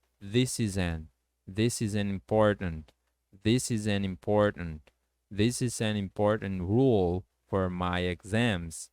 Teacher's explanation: Você vai juntar o this com is, ficando this is. E o is, o S do is, você vai juntar com an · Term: connected speech